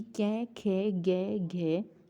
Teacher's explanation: ये 5 शब्द होते हैं, कहाँ से बोले जाते हैं, कंठ से बोले जाते हैं